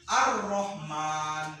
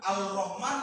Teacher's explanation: ketika kita mengucapkannya, lafaz lam itu tidak dibaca, makanya disebut dengan idgham samsiah